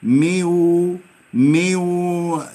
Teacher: دخل الحرف النون في الواو وأصبحت مشددة حرفا واحدا